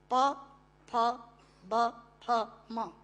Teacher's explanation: दोनों होंठ मिलाकर बोले जा सकते हैं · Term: ओष्ठांग